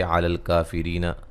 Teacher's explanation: را کو باریک پڑھیں گے